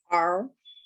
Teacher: American R is pulled back and it's held tensely